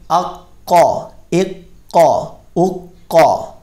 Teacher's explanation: قاف جو ہے یہ پر بھی پڑھا جائے گا اور اس پہ جما کر ہم پڑھیں گے اس کو